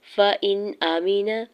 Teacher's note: حمزہ کی زیر کو نون ساکن کے ساتھ ملاتے ہوئے اظہار حلقی ہوگا